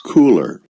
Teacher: The letter R is almost voiceless.